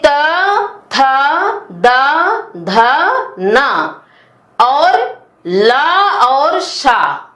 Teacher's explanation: हमारी जीभ दांतों को उनके उच्चारण में छूती है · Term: दंत वर्ण